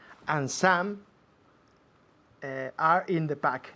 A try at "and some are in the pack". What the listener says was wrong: Y ahora con naturalidad. No como un automóvil. And some are in the pack. And some are in the pack, tal y como habláis en español. Fusionando las palabras.